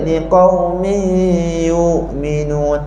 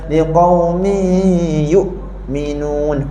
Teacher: Hamzah ni kalau mati kena buat putus